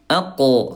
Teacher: huruf qaf dia syiddah, dia kuat, qalqalah mantul ya.